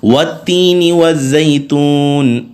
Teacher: دونوں تا ہیں تو باریک پڑے جا رہے ہیں